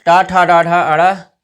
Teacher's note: तो हम मूर्धा से करते हैं, छत की अगला हिस्सा।